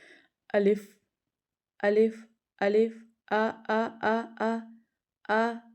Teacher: منہ کے حالی حصے سے الف ادا ہوتا ہے · الف جو ہے وہ جوف دہن سے ادا ہوتا ہے۔